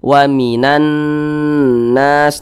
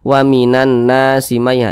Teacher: Gunnah musyaddadah cara bacanya tuh digunnahkan. Jadi suaranya itu kita tahan sejenak ya, kita panjangkan.